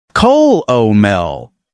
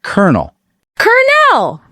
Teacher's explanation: This word came into English from French, ker-nel, and through a process called dissimilation. The L sound shifted to an R sound over centuries of natural speech evolution.